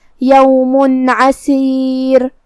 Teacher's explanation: کلمت عسیر میں حرف العین کو ہم حلق کے درمیان والے حصے سے پڑھیں گے · کلمت عسیر میں عین حروف الاظہار میں سے ہے اور اظہار کا معنی ہے ظاہر کرنا اور تنوین کی اصلیت نون ساکن ہے تو ہم یہاں تنوین ظاہر کریں گے اور اسے نون ساکن پڑھیں گے اور بغیر غنہ سے یہ حکم کو ادا کریں گے